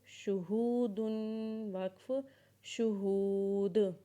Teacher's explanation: وقف کے بعد جب دال کو پڑھیں گے تو اس کے اوپر قلقلہ کریں گے، جیسے شہود، وقف شہود۔